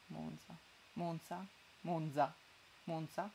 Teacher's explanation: io sono di monza e tutti lo dicono con la z sorda